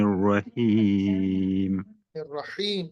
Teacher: हा को वस्ते हलक से अदा करें